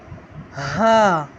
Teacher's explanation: ہا کی آواز ہم سینے سے نکالیں گے، بھاری آواز.